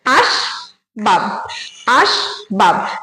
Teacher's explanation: বাব যখন বলছি তখনও ব এর সঙ্গে কোন স্বরধ্বনি উচ্চারণ হচ্ছে না তাহলে এখানে দুটো দল আছে দুটো দলই কিন্তু রুদ্ধ দল এটা